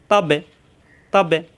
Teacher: তার মাখরাজ জিহ্বার আগা উপরে দুই দাঁতের গোড়ায়